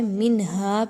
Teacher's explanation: منہا، نون ساکن کے بعد ہا کا حرف آ رہا ہے، منہا پہ آپ نے اظہار کرنا ہے، کسی قسم کا غنہ نہیں کرنا